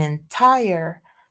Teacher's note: entire, the second syllable is tire, and that T is aspirated because tire has the stress. See, entire, that the stress is there.